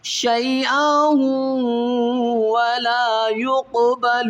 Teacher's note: تو واو کے اندر ادغام مال غنہ کیا جائے گا